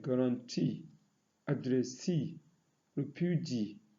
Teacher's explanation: Those that are stressed on the third syllables are words like guarantee, addressee, refugee.